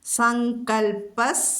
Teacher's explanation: സങ്കൽപ്പ എന്ന് മൃദുവാവരുത്, ങ്ങയും കായുമാണ് അവിടെ വരുന്നത്.